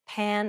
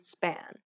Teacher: this P sound is said without aspiration meaning you should not release a burst of air when pronouncing this sound place your hand over your mouth and · Place your hand over your mouth and compare the words pan and span. Note how there is a burst of air in the first P, but none in the second.